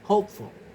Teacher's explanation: the stress remains on the first syllable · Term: stress preserving suffixes